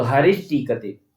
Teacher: सकार ट वर्ग पर में हो तो स के स्थान पर श मूर्धन्य हो जाएगा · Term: मूर्धन्य स